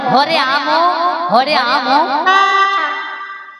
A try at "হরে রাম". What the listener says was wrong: আমো নয় বাচ্চা, হরে রাম,